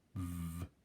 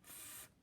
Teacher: An example of this would be f, v. So the v I use my voice box for, and the f is made exactly the same way using the front of my mouth, but I don't use my voice box. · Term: voiced and unvoiced